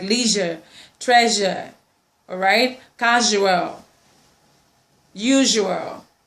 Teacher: Then we have the Z sound, still on the post-alveolar. It's still a voiced sound. It goes with words that have S, okay, but the sound production goes, the articulation process goes Z, like leisure, treasure, all right, casual, usual, and so on and so forth.